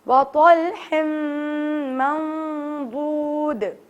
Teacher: दाल पर कलकला क्योंकि आयत के आखिर में आ रहा है